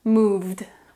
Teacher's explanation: V. V is vocalized, so the ed pronunciation is d.